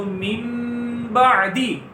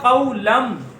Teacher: نون ساکن کو ہم نے میم سے بدل دیا تو من سے بن گیا مم. پھر جب گننا کیا تو مم بعدی. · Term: اقلاب